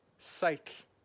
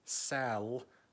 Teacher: with just one ‘L’, so probably the 'L' is held a little bit less